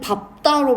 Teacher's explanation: 앞에 리을이 탈락해 버리고 비읍으로 발음이 됩니다. 그래서 밥만 그런 거요.